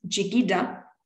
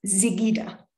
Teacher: language area pronounce this sound as the alviola frive Z so a word such as jigida in the west meaning heart is pronounced zigida in the East